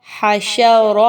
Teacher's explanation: اب اس میں دیکھیے آپ نے حاشا را اس کو نہیں کہنا، ہاں کو موٹا نہیں کرنا، بلکہ ہا کو وسط حلق سے نکالتے ہوئے باریکی کے ساتھ پڑھنا ہے۔ را کو پر پڑھیں گے، را پر زبر ہے